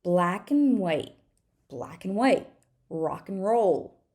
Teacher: and is the strong form and the weak form is going to be an